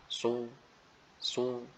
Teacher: kita pertemukan ujung lidah dengan lembaran gigi seri yang bawah. Hanya saja disertai dengan terangkatnya pangkal lisan. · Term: huruf shad